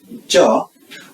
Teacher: the tip of our tongue is touching the ridge of the upper front teeth, as well as tip of our tongue throughout till the middle portion of the tongue, and touches the side of the upper teeth or the side ridge, and thereby hitting the palate. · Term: cha sound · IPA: tʃ